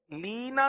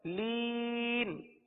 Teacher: حروف مدہ کے بعد جو نون پر زبر تھا اس کو ہم نے سکون میں تبدیل کر دیا وقف کی وجہ سے، لینا تھا ہم پڑھ رہے ہیں لین، کیا پڑھ رہے ہیں؟ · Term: مد عارض